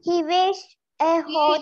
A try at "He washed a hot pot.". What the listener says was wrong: He not wished, he washed.